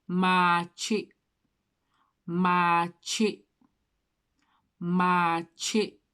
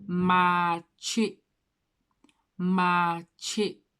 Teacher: The K and the Y gives off this sort of ch sound, like cheese.